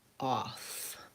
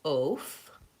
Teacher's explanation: People may accidentally pronounce that more of an off with a rounded O sound. And I do have some rounding on the word off, but if I say it with the O vowel, oaf, you can hear that's a different word. Off is not equal to oaf.